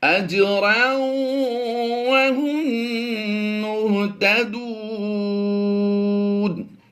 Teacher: وقف کی حالت میں ہم نے زیادہ لمبا اس لیے کیا ہے کیونکہ حروف مدہ کے بعد، واو مدہ کے بعد یہاں پر عارضی سکون آ جائے گا تو یہ مد عارض کہلائے گی۔